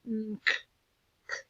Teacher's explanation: Got your tongue in the roof of your mouth and then unk. You make that k sound at the end. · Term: unk sound